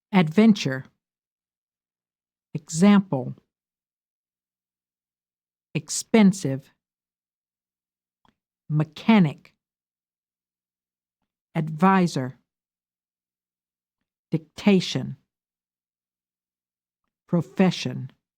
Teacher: Give primary stress to the second syllable.